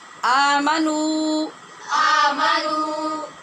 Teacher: ناک میں آواز بھی نہیں لے جانی، اور آمنو بھی نہیں پڑھنا کہ واو ختم ہو جائے